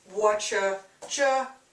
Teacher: So we're just dropping the U, dropping the R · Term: informal contraction